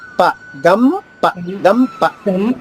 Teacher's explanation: గ తర్వాత అనుస్వరాన్ని మాలా పలకాలి